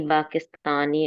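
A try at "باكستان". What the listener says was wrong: इस जी ये आपने पढ़ लिया है, मगर आप जब पाकिस्तान आए ना, इसके नीचे जेर नहीं लगती। ये मुल्क का नाम है ना, जिसके साथ अल नहीं लगा।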